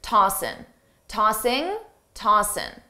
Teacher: commonly a native speaker will drop the G sound on tossing